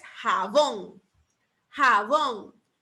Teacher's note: Lleva el acento en la última sílaba, en bon